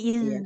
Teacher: kalau makhrajnya sudah tepat tapi karena ada aliran nafasnya jadi bukan zal tapi sa